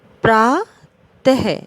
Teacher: ये है हमारा विसर्ग, जिसमें अह की आवाज़ आती है, ह की ध्वनि आती है।